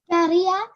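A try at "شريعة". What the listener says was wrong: Say the ha good. Say the ha good.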